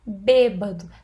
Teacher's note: Tem acento tônico na antepenúltima sílaba